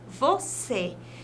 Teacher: mas o nome real desse acento É o circunflexo né e o circunflexo vai trazer uma tonicidade mais fechada